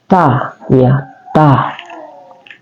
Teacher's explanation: Ta adalah dia termasuk tarful lisan atau keluar di ujung lidah kita.